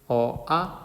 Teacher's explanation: 으어아 입이 안 오므라지죠